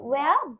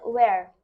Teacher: ব্রিটিশরা ভাওয়েলের পরে যদি আর থাকে তাহলে ব্রিটিশরা আর উচ্চারণ করে না